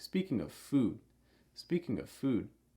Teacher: Speaking of often has that rising intonation, and then whatever comes next often has a falling intonation.